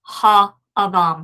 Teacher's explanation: So what happens then is the preceding vowel, that is the vowel that occurs before the aleph, so thus the vowel that is underneath the hey of the article, is going to lengthen, and the long A-class vowel is going to be the kamates, and so thus we have the form ha adam here.